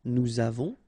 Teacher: final S not pronounced, and then we make this little link between the two